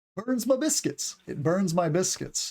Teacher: my is sometimes pronounced as m in the South and other dialects